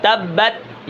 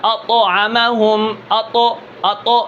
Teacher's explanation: تا جو باریک ہوتا ہے با کے بعد جو تا آتا ہے اس کے اندر قلقلہ نہیں ہوتا. تبت یہاں پر قلقلہ نہیں ہے.